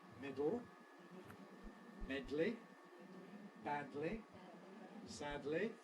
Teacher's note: all of them involve lateral release